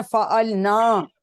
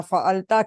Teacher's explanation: دیکھیں انہوں نے کتنا فعلنا, کیونکہ ساتھ الف ہے, اس کو لمبا کر کے ہم نے پڑھنا ہے, زبر کی طرح نہیں پڑھنا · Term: الف مدہ